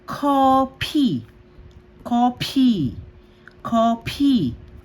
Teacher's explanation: nasa second syllable siya. PH pa rin yung basa sa kanya.